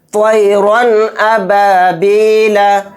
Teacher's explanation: یعنی را کے اوپر 2 زبر ہیں، 2 زبر تنوین کو بولتے ہیں، تو تنوین کے بعد حمزہ آ رہا ہے، اور حمزہ اظہار حلقی کے 6 حروف میں سے ایک حرف ہے، تو یہاں پر اظہار ہوگا، یہاں پر ہم غنہ نہیں کریں گے، اس کو جلد پڑھیں گے ظاہر کر کے